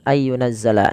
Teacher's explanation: dan di sini kita lihat nunnya tidak berharakat maka Apabila ada nun tidak berharakat bertemu dengan huruf ya maka nunnya dimasukkan ke huruf ya dan suara nunnya dihilangkan